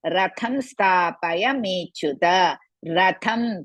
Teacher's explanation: tham is mahaprana and hrisva.